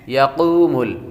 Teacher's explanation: یقوم یا کے بعد قاف حروف مستعلیہ میں سے ہے اور قاف کے بعد واو حروف مدہ ہے